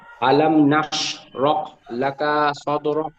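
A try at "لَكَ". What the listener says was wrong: লাকা কাপে টান হয়ে গেল, কাপে টান হবে না। লাকা,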